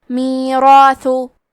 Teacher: حرف الثا کی ادائیگی زبان کے سر اور اوپر کے دانتوں کے اندرونی کناروں سے ہے کیونکہ ثا پہ پیش ہے تو ہمیں پیش کو ظاہر کرنا ہے.